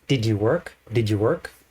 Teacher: the auxiliary verbs did are not really pronounced um unless they're really putting stress but normally they are in the background so did you work